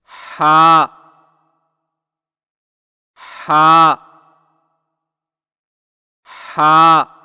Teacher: हलक की तरफ मजबूती से दबाते हुए बारीक और रगड़ खाती सांस में पड़े